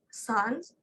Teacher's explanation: air is forced through tongue and alveolar ridge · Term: fricative